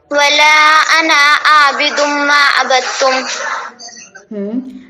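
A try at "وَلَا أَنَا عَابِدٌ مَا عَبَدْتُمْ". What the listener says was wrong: انا نہیں، یہاں پر نون کو نہیں کھینچیں گے.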